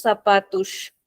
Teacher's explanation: So here the last S is pronounced very softly. It is sh